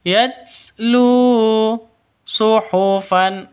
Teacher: lu panjang dua ketukan dua ketukan karena ada wau mati ini wau mati terus sebelumnya wau mati itu dommah atau wau mati diawali dengan dommah mad asli atau mad thb thabi'i yatlu suhufam mutahharah suhufam [Musik] Di sini tanwin bertemu dengan mim baru ini dengung ya.